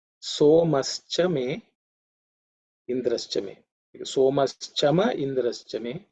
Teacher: Here also the pronunciation should not be difficult because there are no aspirated sounds or difficult consonants. The word Somaha, the visarga has become ish because of sandhi. So that's how Somaha becomes Somash Chame.